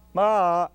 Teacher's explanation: that sound begins with an attack and ictus MA and ends in a descending Glide